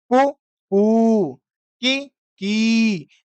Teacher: जो बड़ा ऊ है, उसको दीर्घ लंबा बोलेंगे, जो छोटा है यानी जो ह्रस्व है, उसको थोड़ा धीरे बोलेंगे। मतलब उसकी स्पीड कम होगी।